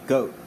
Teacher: But like we usually don't say this sound by itself in English. We usually diphthongize it by following it with a W, as in the word goat.